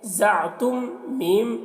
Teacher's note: यहाँ पर मीम में इजहार शफवी हो रहा है, जल्द अदा करेंगे